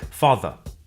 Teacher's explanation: Notice that the final R sound is not pronounced in British English. Father ends in a simple schwa vowel